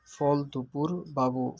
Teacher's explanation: জীব উঁচু হয় জীব পিছনে থাকে ঠোঁট গোল হয় অল্প খোলে